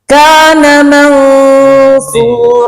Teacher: sifat ketiganya huruf sod adalah isti'la. Jadi ikhfanya tebal, menebal.